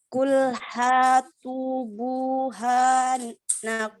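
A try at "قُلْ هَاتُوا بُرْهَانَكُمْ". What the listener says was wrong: Huruf ro-nya kurang jelas. Qul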